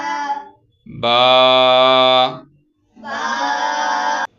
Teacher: تھوڑا سا لمبا بھی کرنا ہے، الف ہے اس کا